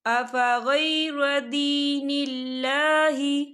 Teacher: یہاں پر اللہ کا نام باریک پڑھا جائے گا کیونکہ اللہ کے نام سے پہلے زیر ہے